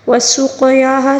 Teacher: اب یہاں پر ہم نے لفظ اللہ کو پر پڑھنا ہوگا۔ وسقیاہا، سین کی سیٹی اور قاف کو پر پڑھیں گے اور قاف کے اوپر ساکن بھی ہے، اس کو قلقلے کے ساتھ بھی پڑھیں گے